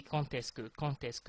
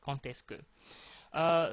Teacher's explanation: You use the t sound even if it ends in D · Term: the liaison